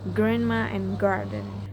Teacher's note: Next, the g sound is a voice velar plosive produced similarly to k but with vocal cord vibration. And the back of the tongue contacts the velum, stops the airflows, and releases it while the vocal cords vibrate, producing the g sound as heard in grandma and garden.